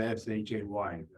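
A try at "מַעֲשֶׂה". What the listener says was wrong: SHAY. It's the this is the scene, not the sheen. Ma'aseh.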